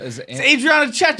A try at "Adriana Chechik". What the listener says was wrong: You're not tipping your tongue.